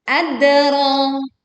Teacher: Dal sukun dibaca dengan jelas dengan patulan yang terdengar kuat. Ro dibaca panjang dan tebal ya, sepanjang 2 harokat.